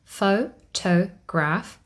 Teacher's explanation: in the word photograph faux toe graph we have three syllables photograph foe the first syllable carries the primary stress this is shown with a little line that